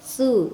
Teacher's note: ujung lidah bertemu dengan gigi seri atas depannya